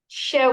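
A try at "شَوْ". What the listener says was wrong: तो आप लंबा करिए, शव शई, इस तरह नहीं, शव।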